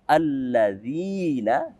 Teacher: Ada ya sukun, ya mati yang didahului oleh kasrah. Maka alladzina kita baca sebanyak dua harokat. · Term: mad tabi'i